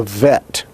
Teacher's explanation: remember that it is not a v but a b fricative